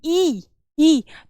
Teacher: देंगे इसका उच्चारण स्थान कंठ होता है आप बोलेंगे ई ई तो आपकी स्वर तंत्र में सबसे ज्यादा आपके तालू पर जोर पड़ेगा